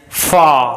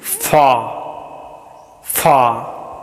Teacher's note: आ as in फा, फा का मतलब है दूर, और यह हिंदी का आ साउंड के समान है, और इसे इंग्लिश का लॉन्ग आ, मतलब इसका उच्चारण थोड़ा सा ज़्यादा समय के लिए किया जाता है।